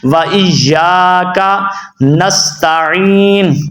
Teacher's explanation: یا کو لمبا کرنا ہے اور آگے کاف کو لمبا نہیں کرنا